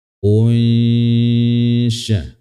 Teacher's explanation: Disertai dengan gunnah, samar dia suaranya. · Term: ikhfa hakiki